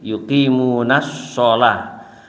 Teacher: Nah, contoh dari lam samsiah ini adalah kata sholah tadi itu, yuqimunas sholah. Jadi alif dan lamnya itu tidak dianggap dalam pembacaannya, walaupun tulisannya tetap